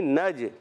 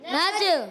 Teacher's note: نون کو جیم سے ملائیں گے، نون کو جب جیم سے ملائیں گے تو ادا ہوگا نج، جیم میں قلقلہ کریں گے